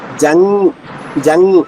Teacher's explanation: అక్కడ జ తర్వాత అనుస్వరం పెదవులు కలవ్వు జంగ్ చూడండి న పెదవులు చూడండి జంగ్ జంగ్ నాలిక మధ్యభాగం పైన వచ్చింది